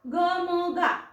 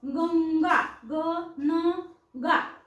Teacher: अनुस्वाराचा गंगा न चा उच्चार येतो म चा कुठेच येत नाही म ऐकू येत नाही